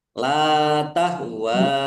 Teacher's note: karena bertemu dengan huruf alif di kata yang berbeda maka menjadi mad jaiz munfasil dibaca panjang boleh lima, boleh dua harakat